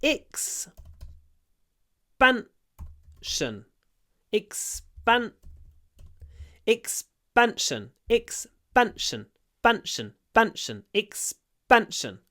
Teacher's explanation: And now we have s before p. So the p becomes a b.